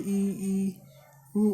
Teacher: वे स्वर जिनके उच्चारण में मुंह बहुत कम खुलता है। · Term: संवृत